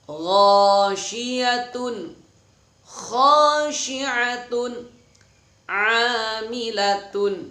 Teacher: Nah, gha-nya panjang karena fathah diikuti alif.